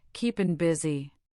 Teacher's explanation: The ing ending softened to in